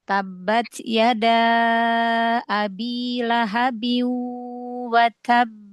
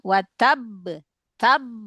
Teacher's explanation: Tidak berlaku nabar pada qalqalah yang bertasdid ketika waqaf.